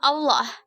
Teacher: Bunyi A dengan ciri-ciri rendah, belakang, bulat dengan contoh kata Allah.